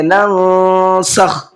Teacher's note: ما ننسخ، نون ساکن ہے اور اس کے بعد میں سین ہے، سین اخفا کے حرفوں میں سے ہے، اس لیے نون میں اخفا کر کے پڑھیں گے، ناک میں آواز تھوڑا سا چھپا کر کے پڑھیں گے